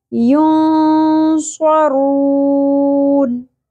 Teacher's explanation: اخفا مع الغنہ ہوگا، نون ساکن کے بعد حروف اخفا میں سے صاد آ گیا، صاد اور را پر پڑے جائیں گے، آخر میں مد عارض وقفی.